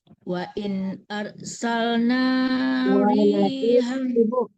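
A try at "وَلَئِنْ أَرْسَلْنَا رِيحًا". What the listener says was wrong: Walain arsal, lahnya ketinggalan kayaknya.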